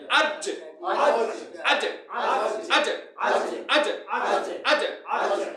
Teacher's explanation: কলকলা অর্থ হচ্ছে ধাক্কা দিয়ে পড়া কি দিয়ে পড়া ধাক্কা দিয়ে। এখন আমার জিহ্বার মাঝখান উপরের তালু ধাক্কা দেবে জিহ্বার কোথায় জিহ্বার মাঝখান কই ধাক্কা দিবে উপরের তালু ধাক্কা দিবে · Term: কলকলার হরফ